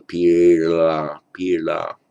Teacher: And as often happens, where you get an intervocalic d, that's a subdotted d with a vowel on each side, that often becomes a subdotted L in Pali. So it's pila, like a retroflex back flap L